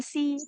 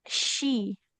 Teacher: Nah, jangan si. Tengah si lidahnya ditekan ke langit-langit. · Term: huruf shin